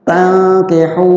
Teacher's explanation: Jadi an nun ketemu ta ikh tankih. Tankih nun ketemu kaf juga ikhfa. disamarkan juga nunnya